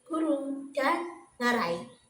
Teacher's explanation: Nah, untuk yang terakhir ada konsonan dorseller yaitu bunyi yang dihasilkan melalui artikulasi melalui ee pangkal lidah sebagai artikulator aktif dan langit-langit lunak sebagai artikulator pasif